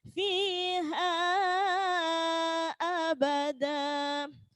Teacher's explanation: Mad iwad itu ketika fathah tanwin dibaca waqaf, fathah tanwin diikuti alif dibaca waqaf, maka bunyinya da, bukan dan